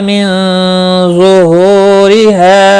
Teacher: نون ساکن کے بعد حروف اخفا کا ضا آیا ہے، اخفا حقیقی ہوگا، غنہ کے ساتھ پڑھیں گے